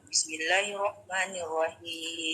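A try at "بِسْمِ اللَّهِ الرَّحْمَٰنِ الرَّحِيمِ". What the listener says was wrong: tasdidnya itu hilang. Kalau seperti itu mbak, tasdidnya nggak ke bawah.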